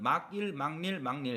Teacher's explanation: 받침 뒤에 이야, 여요, 유가 오게 되면 니은이 첨가되는 거죠.